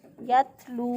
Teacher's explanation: लाम पेश वालू, ये वाव मद्दा है, वाव साकिन से पहले वाले हरफ पर पेश है, तो इसको एक अलिफ के बराबर लंबा करेंगे।